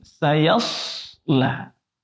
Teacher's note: Huruf sa itu berdesis, tebal, terangkat. Karena dia isti'la. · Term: shad sukun